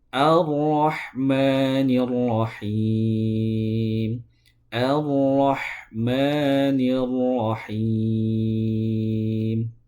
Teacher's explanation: Ro tadi sudah disinggung itu keluarnya dari ujung lidah bertemu dengan langit-langit.